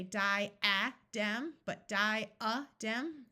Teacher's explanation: The A schwas instead of having a short sound or a long sound.